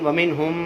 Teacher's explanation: من پہ غنہ نہیں کریں گے کیونکہ ہم میں ہا ہے، ہا حروف حلقی میں سے